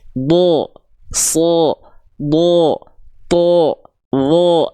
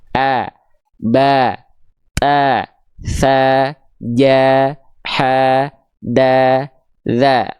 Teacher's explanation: Huruf yang tebal itu nanti dia punya sifat yang namanya isti'la. Isti'la itu mengangkat bagian pangkal lidah sehingga vokal A yang akan keluar berubah menjadi seperti vokal O.